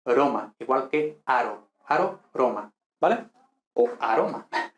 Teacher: siempre pronunciamos la r de forma simple no doble no fuerte incluso a principios de palabra · la pronuncia a ti o restituta supone que la r sonaba igual que en español la r suave